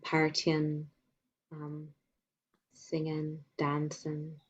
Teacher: that ing suffix is being reduced to in